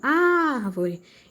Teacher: o ar de árvore é a sílaba tônica, pois ela foi pronunciada com mais intensidade